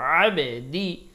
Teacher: আইন উচ্চারণ গলায় চাপ দিব, বাতে কলকলা করবো